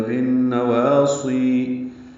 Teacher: سی یا مدہ ہے، یہ بھی تو حرکات لمبا ہے. بالنواصی، صاد کو پر پڑھیں گے، سین نہیں ہے.